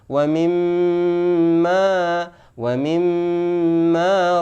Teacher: bacaan gunnah dengung disempurnakan